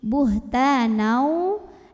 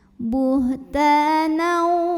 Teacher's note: idgham bi gunnah karena ada tanwin fathah yang bertemu dengan huruf waw. Maka tanwin fathah ini lebur ya, masuk ke waw. Buhtanau dan didengungkan.